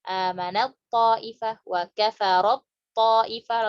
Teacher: langsung masuk ke to. Taknya nggak disebutkan.